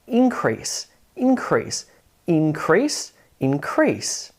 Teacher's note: if you want to say a noun like an increase, you emphasize that first syllable, increase. But if you want to turn it into a verb and increase something, the emphasis or the syllable stress falls on the second syllable.